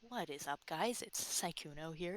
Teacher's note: he has kind of a breathier voice breathy he sounds almost nervous when he talks